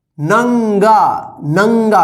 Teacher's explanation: इसमें ज्यादा नाक से उच्चारण हो रहा है, नंगा, नंगा, यानी जो साउंड निकल रहा है नाक से ज्यादा निकल रहा है। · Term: अनुस्वार